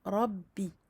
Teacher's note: attention à bien emphasiser le ra, à doubler le ba et l'amincir évidemment.